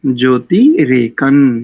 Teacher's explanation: नकारी उच्चारण करेंगे अनुस्वार को